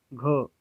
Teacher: घ को देखिए गले में क्या हो रहा है, कंपन हो रहा है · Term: घोष